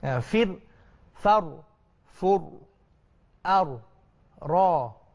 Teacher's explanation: Kalau kita matikan dia, jangan getaran itu jelas. Jangan sampai itu lebih. Dia hanya sikit saja, biasa saja. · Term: takrir